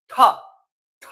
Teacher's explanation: जब ठा बोल रहे हैं तो वायु ध्वनियां बहुत तेजी से निकल रही है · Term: महाप्राण